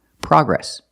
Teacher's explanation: The American pronunciation is progress, with the short ah sound, like hot and stop.